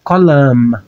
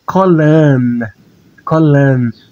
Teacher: no plural masculino eu vou pronunciar colam. Com o som do mem sofite. E no feminino é colan. Colan, com som de N.